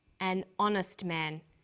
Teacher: the H is not pronounced so honest sounds like it starts with a vowel